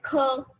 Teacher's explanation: ज्यादा वायु की जरूरत होती है, ये स्ट्रेस देकर हम बोलते हैं ख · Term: महाप्राण